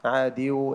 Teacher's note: আয়াদিউ এখানে তোমার নাকে গিয়েছে কম, আয়াদিউ এমন শোনা গিয়েছে, এটা খেয়াল করতে হবে।